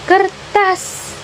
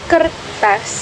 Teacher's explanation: Retropleksi adalah proses melengkungkan ujung lidah ke arah platum atau langit-langit mulut keras saat artikulasi primer berlangsung sehingga bunyi yang dihasilkan mengandung unsur R